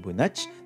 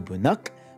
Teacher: palatals are unstable and it's going to jump up to a velar